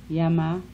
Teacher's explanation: Semi-vowels. Palatal approximant.